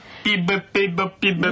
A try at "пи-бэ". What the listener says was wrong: пи-бэ. Нет, не пе-бэ, пи-бэ. Вот. Пи-би, пе-бэ. Медленно сначала.